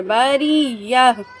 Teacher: گول تا کو یعنی اس کو ہم ہا ساکن کی مانند پڑھیں گے